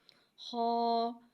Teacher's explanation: خا کو ایک الف یعنی 2 حرکات کے برابر کھینچ کے پڑھیں گے۔ خا حرف مستعلیہ ہے لہٰذا ہم اسے موٹا پڑھیں گے۔ خا کی آواز حلق سے ادا ہوگی